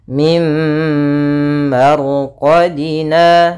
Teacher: nunnya dimasukkan kepada mim ya langsung ke mim dan ditahan gunahnya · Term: Idam bhunah, idgham bi gunnah